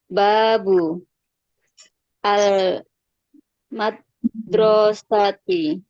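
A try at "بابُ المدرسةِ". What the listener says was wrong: Sambung Bu bacanya, disambung. Babul madrasati gitu.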